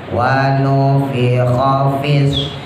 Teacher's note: Jadi jangan dilaguin, pendek semua. Kha-nya ngorokin, fa-nya ada hamesnya. Jangan dikumpulin, jangan ditempelin bibirnya.